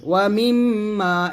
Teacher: সেখানে অবশ্যই গুণা করবেন, আর মাতে এক লিফ টান দিবেন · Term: ওয়াজিব গুণা